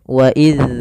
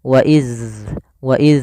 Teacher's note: Maka harus dialirkan suaranya ketika melafalkan dzal sukun. Wa iz, ada alirannya.